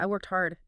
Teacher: the T sound at the end of worked, just vanishes right into the H of hard